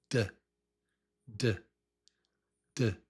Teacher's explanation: Tongue taps with voice. It's tongue taps with voice.